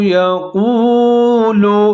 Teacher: قاف کو موٹا کر کے پڑھنا ہے، واو ساکن کے ساتھ ملا کے پڑھنا ہے